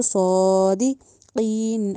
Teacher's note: ان کنتم نہیں کہنا، ان کنتم صادقین، صا میں جو صاد ہے اس کو ہم نے سین کی ساؤنڈ نہیں دینی، سا نہیں کہنا، یا سا کی بھی ساؤنڈ نہیں، صادقی نہیں کہنا، صاد کو ہمیشہ موٹا کر کے پڑھنا ہے، اس کے اوپر کھڑی زبر بھی ہے تو صادقین۔